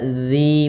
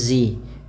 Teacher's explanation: makhrajnya adalah ujung lidah kita ujung lidah kita menempel dengan gigi seri atas ya sehingga dia terbaca dzi bukan lagi zzi Kemudian dzi ada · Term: dalal